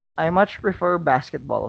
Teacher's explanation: how much is stressed to show that the speaker really likes basketball.